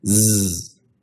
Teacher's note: that buzzing means that zz is a voiced consonant